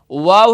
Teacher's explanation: ये दोनों होठों के गोल करने से अदा होता है दोनों होठों को गोल करेंगे तो ये हुरूफ है शफ विया